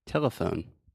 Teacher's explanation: so the schwa is the middle syllable